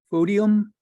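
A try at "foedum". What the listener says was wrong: O-E, O-E, A-E, and E are all pronounced the same. Pretend the O isn't there for a moment.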